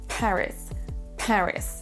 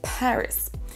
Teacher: Peut-être vous avez vu ma main qui faisait un petit mouvement pour la première syllabe. Paris, c'est la première syllabe qui est accentuée.